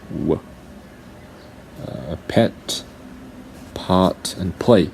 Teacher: So these are called bilabial sounds because you use your two lips.